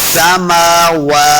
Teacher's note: सिन पे सिटी की आवाज आएगी। समावा, वाव को जब अदा करेंगे, वाव का मखरज तभी सही अदा होता है जब हम अपने होंठ गोल करेंगे।